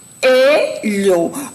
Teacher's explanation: Observem quando a gente pronuncia a palavra coelho, você fala separadamente o O e o E. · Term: hiato